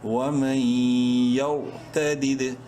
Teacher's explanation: تا زبر تا، دال دال زیر دد، دوسرا دال چونکہ ساکن ہے اس لیے اس میں قلقلہ ہوگا · را کو پڑھتے وقت منہ بھر کے پڑھیں گے کیونکہ را ساکن سے پہلے زبر ہے